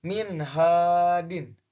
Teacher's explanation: Nah, min hadin bacanya jelas, bacaan nun matinya jelas. Karena nun mati bertemu dengan ha dan ha itu termasuk hukum bacaan idhar maka dibacanya jelas.